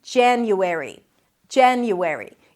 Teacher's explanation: You start with a J sound, J, then it's the A as in cat, ja, ja, an N sound and a Y. Jan-you, transition to an U sound, and then airy.